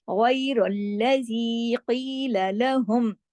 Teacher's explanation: قیل میں قاف موٹا 2 حرکات کھینچے گا، لام 1 حرکت اور لام باریک ، قِيلَ لَهُمْ، اس کو سافٹلی پڑھتے ہیں نا باریک حروف